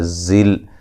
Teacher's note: زا کو سختی سے سیٹی سے ادا کریں گے